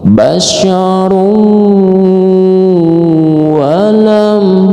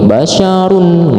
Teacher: Jadi bacanya harus dimasukkan ke wau dan didengungkan.